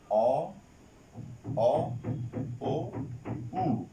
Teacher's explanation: এই তিনটা হচ্ছে পশ্চাৎ অর্থাৎ পেছনের স্বরধ্বনি